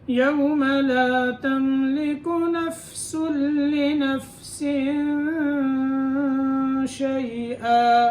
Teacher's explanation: فا کی ادائیگی کے وقت اس کا خیال رکھنا ہے کہ یہاں قلقلہ نہ آئے، یعنی فا کے اوپر حرکت نہیں ہونی چاہیے، فا کو پکڑ لینا ہے، ایسے ساکن کرنا ہے۔